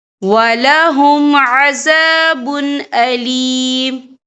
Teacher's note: تو ہم یہ اظہار کریں گے، ہم اسے بنا غنہ کے پڑھیں گے۔